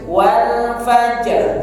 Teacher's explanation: Maka roknya disukunkan, jimnya sukun dipantulkan. Wal fajr, ada arnya di ujung.